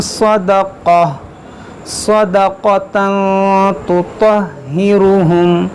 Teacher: یہاں تنوین کے بعد تا ہے تو یہاں پر اخفا کریں گے. یہ تطہرہم یہ تا باریک ہوگا, یہ موٹا ہوگا.